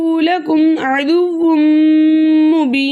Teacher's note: تو کے اوپر کھڑا زبر ہے، کھڑے زبر کو 2 حرکت کی مقدار کھینچ کر پڑھتے ہیں، لیکن آگے نون کا سکون عارضی وقف کی صورت میں آ رہا ہے، اس لیے یہاں پر مد بنے گی مد عارض وقفی، جس کی مقدار 2 4 6 حرکت ہے، لیکن 6 حرکت کی مقدار کھینچ کر پڑھنا زیادہ بہتر ہے